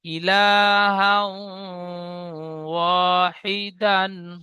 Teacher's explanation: তানবিনের পরে ইউমিনের চারটি অক্ষরের মধ্যে ওয়াও এসেছে। তাই তানবিনের আওয়াজকে এক আলিফ পরিমাণ গুণনা করে পড়তে হয়। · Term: ইদগামে নাকিস